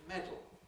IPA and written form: ˈmedl̩ (medal)